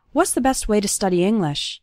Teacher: the word to becomes ta, and it's just barely pronounced at the end of way.